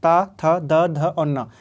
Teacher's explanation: ये ता वर्ग के हैं, ये दंत से बोले जाते हैं।